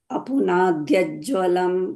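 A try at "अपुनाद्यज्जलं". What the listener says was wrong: that is Apunadyajalam, not Jwalam.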